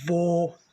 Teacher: O acento circunflexo, que a gente, quando é pequenininho, chama de chapeuzinho do vovô, deixa o som da palavra bem fechado